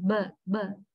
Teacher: when we produce b, our vocal cords are vibrating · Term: voicing